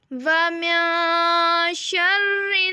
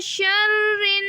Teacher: شرن نون مشدد ہے اس لیے ہم یہاں پہ غنہ کریں گے. پہلے نون پہ ہم اخفا کریں گے اور دوسرے نون پہ ہم غنہ کریں گے.